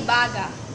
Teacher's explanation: ito ay binibigkas ng mabagal at bukas ang huling patinig ng salita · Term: malumay